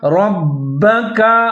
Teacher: را کو موٹا کر کے پڑھنا ہے، با مشدد ہے، را کے ساتھ ملا کے پڑھیں گے اور مضبوطی کے ساتھ پڑھیں گے